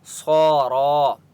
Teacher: صاد کے اوپر کھڑا زبر ہے اور را کے اوپر بھی کھڑا زبر ہے، ان دونوں کو ایک ایک الف کی مقدار کھینچ کر پڑھیں گے۔ صاد کو موٹا پڑھیں گے اور را کو پر پڑھیں گے، صاد مستعلیہ میں سے ہے، ٹھیک ہے۔